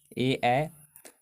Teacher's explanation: तो यह होता है कंठ तालब से ए ए कंठ और तालू दोनों के योग से होने वाला उच्चारण